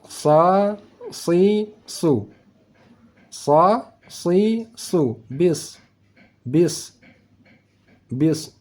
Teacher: itu huruf Shad suara desis anginnya lebih tebal